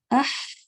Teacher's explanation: اح میں جو ہے یہ جو بعد میں ساؤنڈ آ رہی ہے یہ ہوا ہے، آواز نہیں ہے